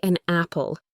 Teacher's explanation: The N sound from an links to the A from apple. It becomes one smooth, connected unit. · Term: linking